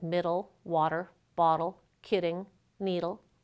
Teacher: You can also hear a flap in the middle of words like middle, water, bottle, kidding, needle. The symbol for the alveolar flap looks a bit like the letter R, but it represents that flap sound.